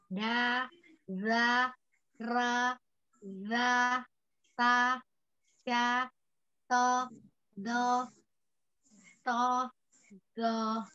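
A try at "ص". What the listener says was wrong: Sama. So-nya ambil dari sa. Ulang. Sa, sya. Nah, tidak ada ya. Ini huruf sya juga bukan monyongkan bibir. Sa, sya, sa, sya, so, do. Bentuk mulutnya sama.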